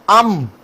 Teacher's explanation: ام جب ہم نے بولا تو ہمیں پتہ چل گیا کہ یہ کہاں سے ادا ہوا ہے؟ دونوں ہونٹوں سے ادا